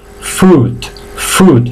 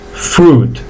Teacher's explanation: Se alargan un poquito tanto las consonantes como la vocal.